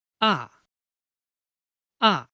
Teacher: the pronunciation is descending like descending a mountain from medium to low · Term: falling tongue